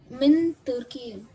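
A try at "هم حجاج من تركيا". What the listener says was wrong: min Turkiya. Min Turkiya. So Turkey, yeah, like America, this is Turkiya. It has alif at the end. Turkiya.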